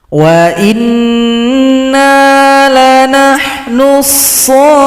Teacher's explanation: Di sini panjangkan shad 6 ketukan atau 6 harokat baru tasydid kepada huruf fa. Mad lazim mutsaqqal kalimi.